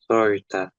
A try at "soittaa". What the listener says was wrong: Soittaa. So double T and double A. Soittaa.